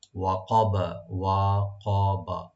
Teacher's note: ওয়াকবা, ওয়াকবা, এটা দুটোটা ওপেন থাকবেন, তিনটা আর রাখবেন। তবে কফটাকে একটু রাইট দিয়ে পড়তে হবে, আর বাবে খলকলা হবে ওয়াকফার সময়।